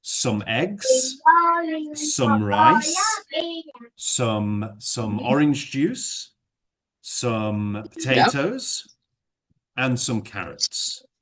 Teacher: what I did all the way through is I went up and up and up, and then right at the end I said carrots and some carrots, and I went down